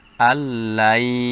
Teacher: নুন সাকিনের পরে ঈদগামে বা গুন্না হওয়ার হরফ ইয়া আসছে, এজন্য গুন্না হওয়ার সাথে পড়তে হবে।